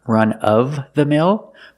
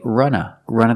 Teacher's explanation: you can pronounce it with v run of the mill but usually you hear people say Runa